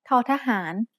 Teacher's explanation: There should be a puff of air coming out of your mouth when you make this sound.